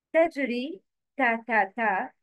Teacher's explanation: ta has light sound, muraqqaqa